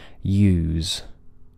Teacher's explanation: end as I said we don't keep the vibration going too long instead it fades away